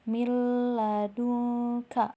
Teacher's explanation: memasukkan huruf sebelumnya ke dalam huruf setelahnya dengan tanpa dengung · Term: Idgham bilagunnah